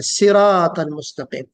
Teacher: स्वाद को मोटा पढ़ना है, उसकी सिफत, और सिरात में थोड़ी सी सीटी बजनी है जिसको हम हम्स कहते हैं।